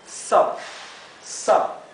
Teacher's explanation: es más cerrada la vocal y es más parecido entre una A y una O